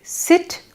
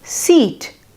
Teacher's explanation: sit is pronounced with short vowel sound, while seat is pronounced with the long vowel sounds